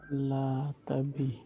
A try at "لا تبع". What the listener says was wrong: لا تبع آخر میں عین آئے گا.